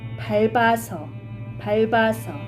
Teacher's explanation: However, when vowel is added to 밥, such as 밟아서, 밟아서, then r sound is pronounced as 받침, while 받침 p sound is combined with the following vowel.